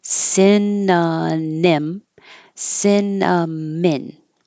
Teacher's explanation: it's only the final syllable that is switched around because the first two sound the same